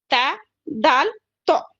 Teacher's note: ता आप नॉर्मल नहीं बोल सकते, जबान आपकी ऊपर के दांतों के मसूड़ों को टच होना ही होना है